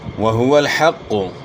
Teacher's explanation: واو کی ادائیگی میں ناتمام ہونٹ گول کرنے ہیں، پیش کو معروف ادا کرنا ہے اور حا کی آواز گلے کے درمیان سے، یعنی حا کو ہا سے چینج نہیں کرنا، حق کو نہیں پڑھنا، حا پڑھنی ہے، حق۔